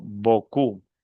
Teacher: La o con la u se pronuncia u.